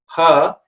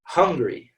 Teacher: just similar to the schwa but it's a bit more open